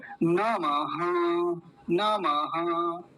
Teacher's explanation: नमः, ये विसर्ग बन रहा है, तो ये विसर्ग आधे ह जैसी आवाज देगा, जैसे आधा ह हो